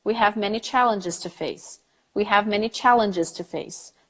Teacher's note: there is a vowel between the G and the s very clearly